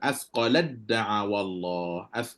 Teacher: Tak ada dah bunyi hams pada ta tu, tak ada dah.